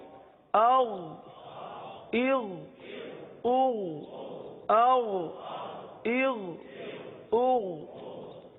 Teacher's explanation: تو اب اس میں عموماً جو ہے غین کے بجائے گاف کی ادائیگی کرتے ہیں، استغفر اللہ، استغ نہیں، غین ہے حلق کے اوپر والے حصے سے ادا ہوتا ہے، غین کو پر ادا کرتے ہیں